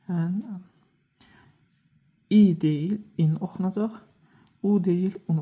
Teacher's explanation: Yəni tənvinlərdə əlavə n səs əlavə olunur.